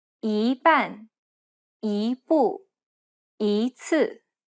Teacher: However, for all other cases, if the next tone is a falling tone, it should be pronounced as a rising tone.